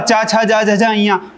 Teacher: चा, छा, जा, झा, इया पूरा तालु से बोला जाता है।